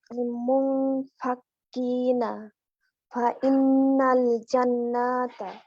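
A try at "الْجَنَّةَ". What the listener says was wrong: জান্নাত, নাতে কিন্তু টান নাই, দেখেন। জান গুন্না হবে, নাতে আর টান নাই। জান্নাতা, জি।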